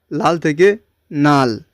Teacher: প্রথমটা লটা পরিবর্তন হয়ে দন্তন্য হলো, মানে নাল। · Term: বিষমীভবন